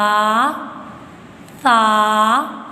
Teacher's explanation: سا میں سیٹی کی آواز نہیں آئے گی